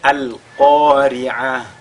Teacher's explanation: lorsqu'on marque donc une pause sur ta marbuta, n'est-ce pas? On le lit comme un ha.